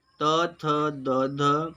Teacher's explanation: त थ द ध दंत ध्वनियाँ होती हैं